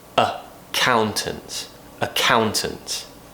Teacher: the stress in this word is on count accountants right so because this first vowel is not stressed and usually when it's the letter a it will be changed into a schwa sound · the stress in this word is on cow